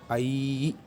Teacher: अकार और दीर्घ इकार से मिलके बना हुआ है, तो इसका उच्चारण होगा आई